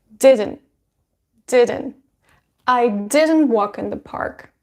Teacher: normally this t sound is pronounced as a stop d so you put your tongue to pronounce this t sound but you don't release it